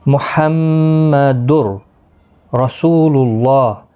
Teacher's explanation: لام اور را کی صورت میں بغیر گنہ کے ملا کر پڑھیں گے۔ اس کو ادغام بلا گنہ اور ادغام تام بھی کہا جاتا ہے۔